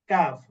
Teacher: জিহ্বার গোড়া থেকে একটু আগে বাড়াইয়া তারপর আবার উপরে তালুর সঙ্গে লাগাইয়া কাফ